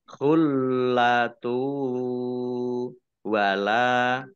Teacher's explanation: Khullatu lamnya dibaca double ada tasdidnya. Domah tanwin bertemu dengan huruf wawu bacaan idgham bi gunnah masuk dengan mendengung yaitu mendengung wawu ditandai wawunya ada tasdidnya.